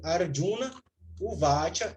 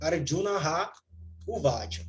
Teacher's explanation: Visarga cai significa que ela é elidida. Ela some. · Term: Elisão da visarga